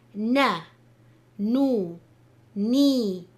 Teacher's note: articulated from the tip of the tongue touching the roots of the upper incisors